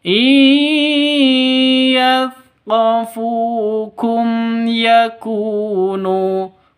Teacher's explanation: Qafu, fu panjang 2 ketukan karena ada waw mati diawali dengan dhammah.